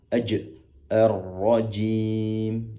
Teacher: Adapun jim itu berasal dari lidah tengah yang ditempelkan ke langit-langit.